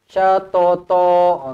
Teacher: To yang pertama ni pendek, to yang kedua yang hujung ni barulah panjang mad iwad.